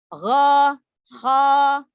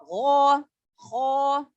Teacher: Jadi jangan kho. Tidak boleh memonyongkan bibir karena dia bukan huruf bibir, bukan huruf asyafatain, ya huruf tenggorokan. Jadi membuka mulut karena kita akan membunyikan harokatnya, harokat fathahnya, ya.